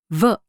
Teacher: To make the sound of letter V, place your top front teeth against your lower lip, as with F. But then, without releasing air, vibrate your vocal cords and release your teeth from your lip.